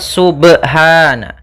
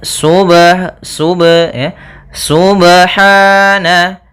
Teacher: pada bacaan subhana ada pada lafal huruf ba sukun. Apabila ada huruf ba dia harakatnya sukun maka ada hukum qalqalah. Maka harus dipantulkan dalam membacanya. Hati-hati juga dalam pantulannya jangan sampai ada tambahan hamzah atau di dalam bacaannya ada saktah misalnya subha.